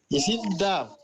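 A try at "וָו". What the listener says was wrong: No, it's Vav. It's the V sound, Vav.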